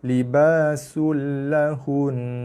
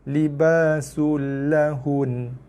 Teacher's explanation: kita berhenti pada nun bersabdu, kita akan baca dia dengan nun, baca dengan baris mati. Cuma sebab nun bersabdu, so dengung kekal. Na je tak bunyi sebab kita matikan dia.